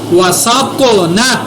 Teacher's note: قا کو پر بھی ادا کیا، قا کے اوپر میں نے قلقلہ بھی کیا کیونکہ قا حروف قلقلہ میں ہے.